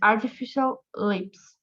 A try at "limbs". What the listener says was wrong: Limbs. P no, B. Limbs. Limbs.